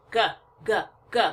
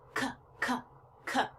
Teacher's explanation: throat is making the sound too and I know that because when I put my fingers on my throat and I make the G sound I can feel a vibration in my throat but when I make the k sound c c c it's lighter and it's just in my mouth mostly okay so it's unvoiced and so we'll practice the rest of